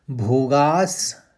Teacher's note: भोगास विसर्ग में स का उच्चारण लेना है